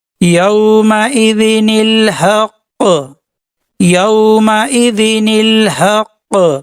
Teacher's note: قلقلہ کے ساتھ وقف کریں گے